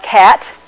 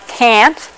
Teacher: To make yourself more aware of nasality, you can make an ah sound like cat, and then an ah sound like can't. So we can go from ah to ah.